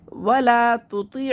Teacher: वला तुती' मखरज में ये आवाज़ रुक जाएगी और ता को बारीक पढ़ेंगे। वला तुती' अलिफ मद को खींच लेंगे और ता को बारीक पढ़ेंगे, तो को मोटा पढ़ेंगे और आइन को हलक से निकाल के पढ़ेंगे और मखरज में आवाज़ आके रुकेगी।